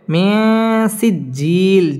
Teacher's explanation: নুন সাকিনের বামে সিন আসছে সিন ইকফার হরফ গুন্না লুকিয়ে করতে হবে